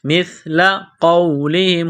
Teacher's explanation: قبلہم مثل قولہم، میم کو سا کے ساتھ پلس کرنا ہے، سا پڑھتے وقت زبان تھوڑی سی باہر نکالیں گے، سا کو نرم پڑھیں گے